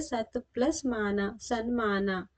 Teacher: ಪೂರ್ವ ಪದದಲ್ಲಿರುವ ತ ಬದಲಿಗೆ ನ ವ್ಯಂಜನ ಬಂದಿದೆ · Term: ಅನುನಾಸಿಕ ಸಂಧಿ